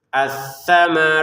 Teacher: Untuk kata tsamarat panjangnya enam harakat. Kemudian huruf t-nya keluarin nafas sedikit. Atsamarat seperti ya ada nafas keluar dikit.